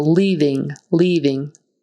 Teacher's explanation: make sure you hit that v that it doesn't become a b. Some speakers might be tempted to make their v's sound like b's.